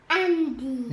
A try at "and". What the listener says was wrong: It would be Andy if a Y is at the end, but there's no.